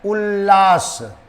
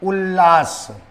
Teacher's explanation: अगर इस त वर्ण का मेल ल से हो जाए तो ये त वर्ण एक और ल वर्ण में बदल जाएगा। अगर त है कहीं भी, किसी शब्द के लास्ट में त है और आगे कोई शब्द है जिसका शुरुआत ल से है, तो यहां पर त जो है वो ल में आ जाएगा। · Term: व्यंजन संधि